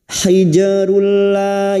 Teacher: langsung masuk pada huruf lam alif tanpa ditahan lama-lama tanpa mendengung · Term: idgam Bil guna